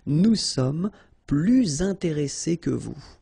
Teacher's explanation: Okay, and in that case, well, you make this little link, little liaison between the two, so you hear a little bit this S